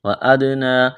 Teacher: وَأَدْنَى دال ساکن ہے، اس سے پہلے زبر ہے تو قلقلہ کریں گے دال پر، حمزہ کو دال کے ساتھ بلس کرنا ہے.